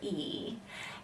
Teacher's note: If you blend E and you get ya. Blending those two sounds, E and gliding or sliding them together, produces the ya sound.